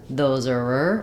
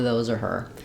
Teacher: reduced to ir and links to those those are and then we may or may not leave off the H sound of her